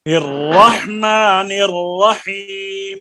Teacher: را کے اوپر جب ٹھہریے، را کے آپ نے پڑھا ہے نا، را کے اندر آواز بالکل مکمل بند نہیں کرنے